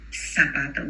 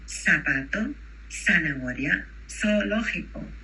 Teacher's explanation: there is no voiced S in Spanish